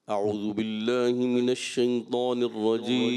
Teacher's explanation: اعوذ ذال ادا کرنا ہے، زا کی طرف نہ جائیں